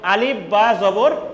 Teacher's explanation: during the pronunciation of letter ba sound is stopped at two lips so mahras of the letter ba is the both leaves of